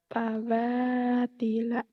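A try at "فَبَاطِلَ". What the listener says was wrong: Fa bukan pawa, faba. Teringatnya faba.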